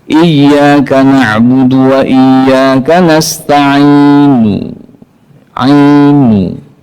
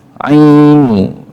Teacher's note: Jadi raum itu membunyikan sepertiga harokat. Ta'inu full 3/3.